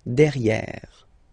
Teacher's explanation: you've got E here and then double R, so it will open the sound of this E, and you should pronounce it E, okay?